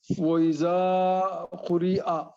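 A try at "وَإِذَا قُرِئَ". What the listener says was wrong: زال کو سیچ نکالے تھوڑا. زبان کو جو ہے نا دونوں دانت کے بیچ میں لائیے. زبان تھوڑا باہر نہیں آتی. تھوڑا باہر لائیے زبان اس طرح. زال موٹا نہیں کرنا. صرف باہر لائیے.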